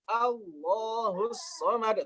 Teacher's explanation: Jika lafaz Allah dibaca dari permulaan misalnya Allahus Somad tebal